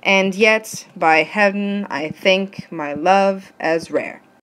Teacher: I'm going to ignore the fact that heaven has two syllables and I'm just going to mark it as one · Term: one syllable